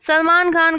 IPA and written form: səlˈmaːn xaːn (Salman Khan)